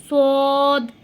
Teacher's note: আপনার সামনের দুইটি ঠোঁট একটু গোল করে আপনারা সদটা উচ্চারণ করবেন। আপনার জিহ্বার আগাটা সামনের নিচের দুই দাঁতের সাথে লাগিয়ে উচ্চারিত হবে সদ। আর এই সদটা আপনারা উচ্চারণের সময় একটু মোটা এবং একটু শক্ত করে উচ্চারণ করবেন।